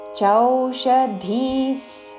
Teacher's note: చోషధిస్ కాదు చౌ ఔత్వంతో